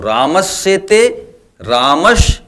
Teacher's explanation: रामस शब्द का जो अंतिम वर्ण है यह व्यंजन है और यह दंत सा है, और दूसरा सेते में जो पहला वर्ण है वह तालव्य सा है। दंत सा के साथ तालव्य सा आया तो दोनों मिलकर के तालव्य सा ही हो जाते हैं। तो इस परिभाषा के हिसाब से स के साथ जब तालव्य सा आए तो दोनों में विकार हो करके जो परिवर्तन होता है वह तालव्य सा हो जाता है।